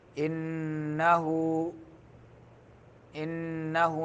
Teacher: इन्नहु में नून मुशद्दद है, गुन्ना करना है